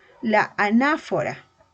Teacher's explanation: la mayor fuerza de voz no le tenemos en la primera vocal sino en la segunda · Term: no presenta hiato